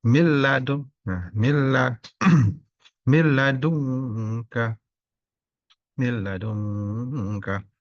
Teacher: Nah, nunnya tidak dibaca, lamnya ditasdid. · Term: idgham bila guna